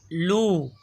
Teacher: लाम जबान का किनारा और आगे की दो दाड़ो समेत दांतों की जड़ से अदा होता है · لام زبان کا کنارہ اور آگے کی دو داڑھوں سمیت دانتوں کی جڑ سے ادا ہوتا ہے